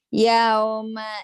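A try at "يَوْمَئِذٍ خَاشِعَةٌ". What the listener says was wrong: Yau, jangan yao. Yau. Yau. A, jangan huruf O. O tadi A, giliran A ini O. Yau, jangan yao. Yau.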